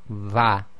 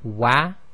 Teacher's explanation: when you say va, you're using the makhaarij of the fa instead of rounding the lips like the wa.